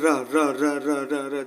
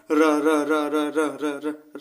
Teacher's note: जब बोल रहे हैं तो हल्का सी कंपन हो रहा है, तो कंपन से प्रकंपित हो जाएगा और रा को प्रकंपित वर्ण या लुंठित वर्ण बोलते हैं।